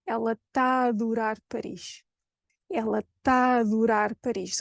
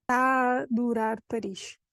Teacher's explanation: So that triple A unites forces and becomes an open, slightly longer A.